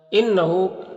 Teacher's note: انہو نون مشدد ہے، یہاں پر غنہ ہوگا، نون کی آواز کو ناک میں لے جا کر گنگنائیں گے، 1 الف کی مقدار